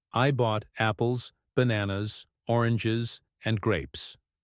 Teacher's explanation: when listing things or giving options your voice Rises for each item and falls at the end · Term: rise fall intonation